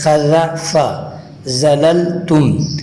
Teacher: زال کے اندر زبان کو اوپر کے دانتوں کے ساتھ ٹچ کر کے ادا کرنا ہوتا ہے